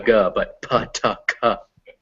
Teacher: P's, T's, and K's are aspirated. They have that puff of air, but B's, D's, and G's don't.